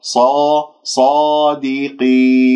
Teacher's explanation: الصاد مفخمة مرتبة أولى لأنها مفتوحة بعدها ألف، ولا تكوير للشفاه، أرجوكم لا تكوير للشفاه، لا تقول صو صو، خاصة خاصة حرف الصاد صو خطأ، ص صادقين.